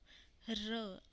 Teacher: र आप बोल के देखो, इसमें कोई भी फ्रिक्शन नहीं आ रहा और एयर जो है वो वाइड गैप से होके निकल रही है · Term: फ्रिक्शनलेस कॉन्टिन्यूएंट